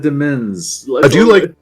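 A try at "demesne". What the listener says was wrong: But nobody pronounces it demens. It's just pronounced domain.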